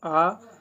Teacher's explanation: मध्य स्वर के अंदर आता है, यानी कि जीभ क्या है? बीच में रहती है।